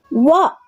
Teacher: ಈ ಅಕ್ಷರವು ಹಲ್ಲು ದಂತ ಮತ್ತು ತುಟಿ ಅಂದ್ರೆ ಅಂದ್ರೆ ಓಷ್ಠ ಇವುಗಳ ಸಹಾಯದಿಂದ ಹುಟ್ಟುತ್ತವೆ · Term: ದಂತೋಷ್ಟ್ಯ